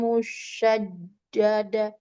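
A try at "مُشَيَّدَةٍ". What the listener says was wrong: Lihat hurufnya. Shin bertemunya dengan ya. Syai. Tidak dadah. Satu kali saja.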